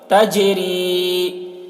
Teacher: جیم میں قلقلہ کریں گے، جیم حروف قلقلہ میں سے ہے